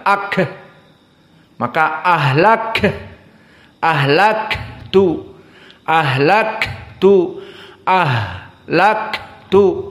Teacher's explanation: ha dan Kaf sama-sama huruf hams dan kelebihannya ha dalam keadaan rakhawah